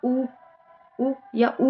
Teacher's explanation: ना वो भी ओट ध्वनियों के अंतर्गत ही आता है क्योंकि जब आप छोटा उ या बड़ा उ बोलेंगे तो आप खुद नोटिस करेंगे कि आपके दोनों ओठ यूज हो रहे होते हैं उसमें जब आप उ उ या उ बोलते हैं तो आपके